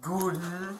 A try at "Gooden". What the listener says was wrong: That's one way to pronounce it. it's not long, no, it's just Gooden. Gooden, yep. That sounds like you're pronouncing it with a German accent, I guess.